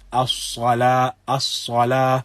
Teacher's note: there is something from a slight whistle sound when one recites this. This is what is known as a safir · the Sin is recited by keeping the tongue inside the mouth, and it is kept low within the mouth. But the back of the tongue with Sin, the back of the tongue is raised slightly when one recites it. · But the back of the tongue with Sin, the back of the tongue is raised slightly when one recites it. So one recites as-salah, as-salah, and as you can observe, there is something from a slight whistle sound when one recites this.